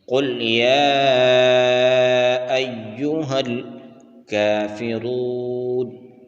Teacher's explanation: قل یا ایہا الکافرون، قل یا ایہا، قاف کو موٹا پڑھنا ہے، یا کے اوپر کھڑا زبر ہے اور اس کے بعد حمزہ دوسرے کلمہ میں ہے، اس کے اوپر مد منفصل ہے، اس کو 3 الف کی مقدار کھینچ کر پڑھنا ہے۔ یا کے اوپر شد ہے، مشدد حرف کو ڈبل کر کے سختی کے ساتھ اب پڑھتے ہیں۔